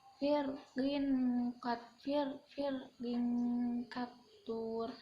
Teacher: Ada kasrah tanwin bertemu dengan huruf kaf, ini dinamakan ikhfa, dibaca samar